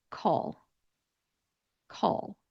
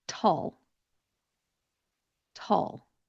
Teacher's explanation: All of them end with that dark L sound.